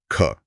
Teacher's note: इसमें तो हवा का तेज झोंका लगा हथेली पर। यह महाप्राण है। · महाप्राण में ना ह जैसी एक ध्वनि छुपी होती है